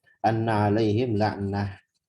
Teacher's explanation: Maka di sini berhentinya pakai hak. Anna 'alaihim la'nah. Bukan laknat.